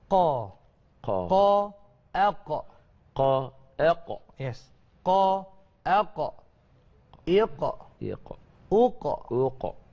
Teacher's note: qaf ni sebut dia punya macam dekat-dekat anak tekak kita, tapi dia bukan huruf halqum, dia huruf lisan lagi tapi dia pangkal. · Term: huruf qaf